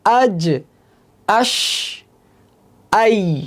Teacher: জিহ্বার মাঝখান তার বরাবর উপরে তালুর সাথে লাগে উচ্চারিত হবে জিম ঠিক মাঝখান থেকেশিন একটু বাইরের দিকে সরে ইয়া তার থেকে একটু বাইরের দিকে সরে জিম ঠিক মাঝখানে একটু বাইরের দিকে সরবে ইয়া তার থেকে একটু বাইরে সরে উচ্চারিত হবে। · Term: জিম শিন ইয়া